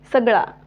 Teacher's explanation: हा जो त्यामध्ये जो अ स्वर आहे तो किती पटकन उच्चारल्या जात आहे अपूर्ण उच्चारल्या जात आहे